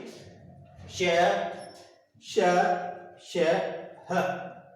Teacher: बाहर निकलते वक्त एक घर्षण की प्रक्रिया होती है, और उसी घर्षण के कारण ऐसा माना जाता है कि जो हवा है वो थोड़ी सी गर्म हो जाती है, उष्ण हो जाती है, और उष्ण होने के कारण उसे नाम दिया गया उष्ण व्यंजन।